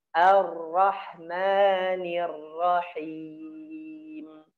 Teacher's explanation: saya samarkan nah sifat terakhir ya atau sembunyikan Ya Syifa terakhir pada huruf ro apabila bertasydid Jadi enggak boleh terlalu banyak bergetar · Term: disamarkan